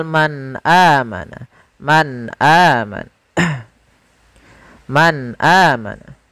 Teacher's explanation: ada nun yang disukunkan bertemu dengan huruf hamzah setelahnya, sehingga suara nunnya tadi harus jelas karena izhar itu adalah kita menjelaskan suara muzharnya, menjelaskan huruf yang dibaca jelas, yaitu suara nunnya harus jelas.